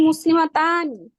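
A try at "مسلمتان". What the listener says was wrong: হ্যাঁ, একটু টান হবে না, আলিফের এক আলিফ টান আছে না? একটু টান দিয়ে বলাটা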